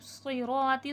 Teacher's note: سواد مستعلیہ ہے، موٹا کر کے پڑھا جائے گا. رو بھی موٹا کر کے پڑھا جائے گا.